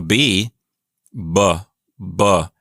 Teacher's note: that's a voiced consonant your vocal cords vibrate as you say it but if you do not vibrate your vocal chords while you